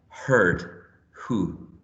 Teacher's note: we find the voiceless glottal fricative